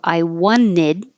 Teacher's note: drop the T and wanted